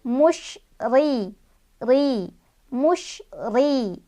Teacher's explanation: Ri-nya dibaca tarqiq ya. Karena huruf ro-nya berbaris kasroh. Jadi otomatis kalau ro barisnya kasroh bacanya tarqiq.